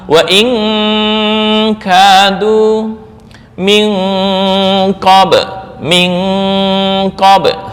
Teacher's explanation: Qof dan kaf itu pangkal lidah dalam dekat dengan tenggorokan. · Cara membacanya dengung lebih besar daripada ikhfa. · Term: ab'ad